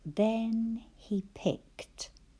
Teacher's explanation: And that was one of those words where suffix ed sounded like t.